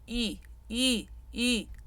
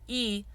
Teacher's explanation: the front closed e is very very lifted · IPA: [e]